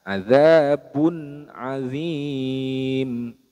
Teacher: dibaca jelas bunyi Nun sukunnya adzabun adzim tidak boleh adzabun adzim tidak boleh didengungkan tidak boleh · Nah, karena syaratnya izhar halqi itu yaitu ketika nun sukun ataupun tanwin seperti ini, bertemu dengan salah satu huruf hamzah, ha, ain, ha, ghain, kha. Maka dibaca izhar halqi, yaitu dibaca jelas bunyi nun sukunnya.